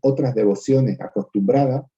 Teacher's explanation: Probablemente decía también otras devociones acostumbradas y fíjense que en otra, que tenía que ser otras, se le olvida la S, precisamente porque no la pronuncia sibilante, sino que la pronuncia aspirada